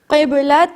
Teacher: اب میں 3rd last line پر یعنی آخر سے 3ری لائن پر ہوں اور آپ دیکھ سکتے ہیں قب کے اوپر با ریڈ کلر کا ہے، یہاں قلقلہ ہوگا یعنی با کو تھوڑا پریس کریں گے